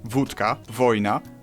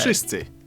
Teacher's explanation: W in wszyscy should sound like W, wódka, wojna, but it seems to soften up to an F